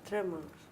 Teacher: What am I doing with the schwa? I'm making it quicker.